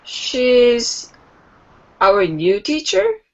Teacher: you can speak a declarative statement, but it's still going to have the final rising intonation